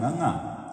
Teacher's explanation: ngੰਗਾ ਕਹਿਣ ਵੇਲੇ ਜੀਵ ਕਾਫੀ ਪਿਛਾਂਹ ਨੂੰ ਟੱਚ ਹੋਏਗੀ ਤਾਲੂਏ ਦੇ ਪਿਛਲੇ ਹਿੱਸੇ ਵਿੱਚ, ਤੇ ਉਹਦੇ ਨਾਲ ਨਾਸਕੀ ਉਚਾਰਨ ਹੋਏਗਾ